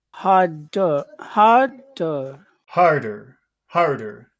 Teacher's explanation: both syllables would be low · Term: low tone